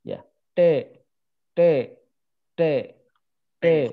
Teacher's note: orang Bali itu ketika mengucapkan huruf T, itu ujung lidahnya lebih ke langit-langit ya. Ya. Langit-langit tengah ya.